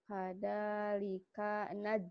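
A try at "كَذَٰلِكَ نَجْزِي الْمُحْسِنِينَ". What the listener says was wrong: Bukan hada. Kada. Kedengarannya kayak hada ya. Kada. Kadal, kadal, kadal.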